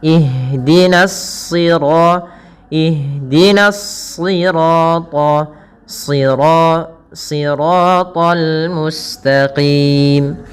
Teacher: Yang ditebalkan adalah huruf shadnya, yang dimana di sini huruf shad termasuk huruf-huruf isti'la. yang dia pangkal lidahnya terangkat dan menebal.